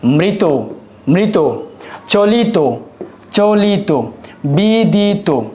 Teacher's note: আরেকবার বলতেছি প্রিয় শিক্ষার্থীবৃন্দ, কোন একটা শব্দে ত এবং ইত প্রত্যয়যুক্ত হলে, ত এবং ইত প্রত্যয়যুক্ত শব্দের শেষ যে অটা আছে ব্যঞ্জনযুক্ত এবং স্বাধীন অ, সে অ এর উচ্চারণ ও এর মতো হয়ে থাকে